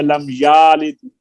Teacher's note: یعنی لم یلد میں یا کی زبر کو کھینچ کر الف بنا دیا